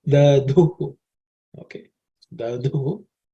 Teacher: Dhu is the fourth letter in the third varga, so it has to be aspirated.